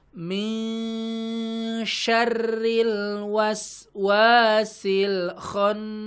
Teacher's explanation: nun sukun ketemu shin teman-teman ya, secara istilah namanya ikhfa hakiki gitu ya. disamarkan bunyi n-nya ya, bunyi n-nya samar. Ya n-nya enggak sempurna.